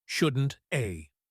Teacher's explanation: the words shouldn't have blend together to sound like shouldn't a. It sounds like one long word.